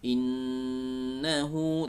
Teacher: ya itu baca ditahan dulu jangan tergesa-gesa ditahan dulu ya Kemudian didengungkan dari suara al-khaisyum atau hidung eh karena bacaan ghunnah salah satunya adalah Nun bertasydid itu dari suara hidung